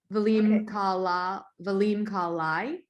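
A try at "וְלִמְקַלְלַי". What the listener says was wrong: This would be a perfect place to actually pronounce the Shva. Valim Kalilai, if you see that.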